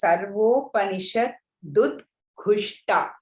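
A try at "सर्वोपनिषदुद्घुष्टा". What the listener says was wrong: So not to stop at Nishad, stop at Nisha and then say Dudghushta. Sarvopanisha Dudghushta. Nisha you should stop to say Dud.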